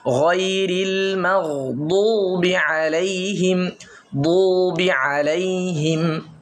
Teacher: মানে গায়রিল ঠোঁট গোল হবে না, একদম ঠোঁট গোল হবে না।